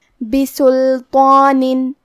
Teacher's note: یہاں حرف الطو ہے اور اس پہ کھڑا زبر ہے، تو کیونکہ یہاں مد الف ہے، لہذا ہمیں طو کو اور مد الف کو دونوں کو موٹی آواز میں پڑھنا ہے۔